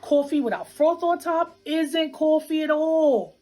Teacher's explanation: one feature common in new york city is what we call a raised vowel in words like thought and cloth it sounds something like oh coffee without froth on top isn't